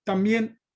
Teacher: también es una palabra aguda porque está acentuada en la última sílaba